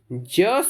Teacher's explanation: ज शब्द जो है यह स्पर्श संघर्षी है